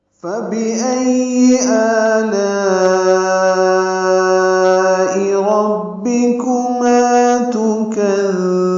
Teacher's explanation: معروف طریقے سے پڑھنا ہے، حمزہ کو یا سے ملانا ہے، حمزہ اقصی حلق سے ادا ہوگا ، حمزہ کو یا سے ملانا ہے، یا پر تشدید ہے،